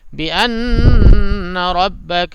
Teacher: نون پہ غنہ کیجیے گا کیونکہ نون پہ تشدید آ گیا، اور را کو پر کیجیے گا کیونکہ را پہ زبر آ گیا.